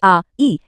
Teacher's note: दीर्घ स्वर जैसे आ, ई इनमें 2 गुना समय लगता है।